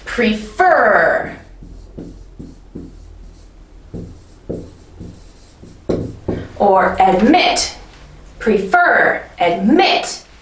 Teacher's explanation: a verb like prefer, or admit, prefer, admit, emphasis is on the second syllable.